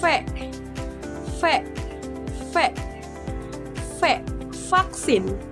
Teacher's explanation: vaksin suara v adalah spiran bibir gigi untuk menghasilkan suara ini bibir bawah didekatkan e ke gigi atas e membentuk celah sempit udara mengalir melalui celah Ini menghasilkan suara yang bergetar jadi seperti ini V gigi atas dekat dengan bibir bawah v